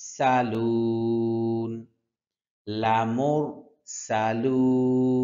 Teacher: সানের উচ্চারণ হবে যখন আমরা গরম তেলের মধ্যে মাছ ভাজি ওই সময় যেরকম আওয়াজ হয় সেইম এরকম একটা আওয়াজ হবে